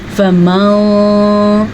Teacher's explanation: اس نون ساکن یا تنوین کی آواز کو چھپا کے پڑھتے ہیں. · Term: اخفا